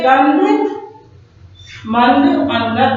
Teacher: नाक से। अनुस्वार का उच्चारण बच्चों हम नाक से करते हैं